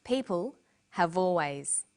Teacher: notice how in conversation we link the final consonant sound V with the initial vow sound o have crocodiles are crocodiles are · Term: linking